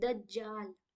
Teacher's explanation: अच्छा, दज्जाल में याद रखेंगे कि दाल में भी तशदीद है, तो दाल के साउंड को भी 2 बार निकालेंगे